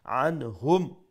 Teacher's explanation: make sure you pronounce the ain from the middle of the throat